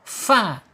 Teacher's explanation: ujung gigi seri atas menyentuh perut bibir bagian bawah fa kemudian secara hamas ketika dia bersukun mengalir udaranya mengalir napasnya menjadi sifatnya alhams hames Kaf kaf gitu ya.